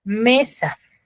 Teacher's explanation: tiene la mayor fuerza de voz en la me está en la penúltima sílaba qué será es grave grave palabra